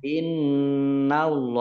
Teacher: Innallaha nun tasdid dibaca mendengung atau gunnah ditahan 2 harokat. Allahnya dibaca tebal karena harokat di depannya fathah.